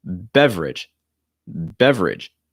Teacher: that second e is not pronounced